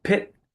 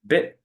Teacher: When I put my hand in front of my face and say pit, I feel a bigger puff of air. When I put my hand in front of my face and say bit, I feel a smaller puff of air. And it's possible that building up that puff of air for the P requires a little bit more lip tension or something.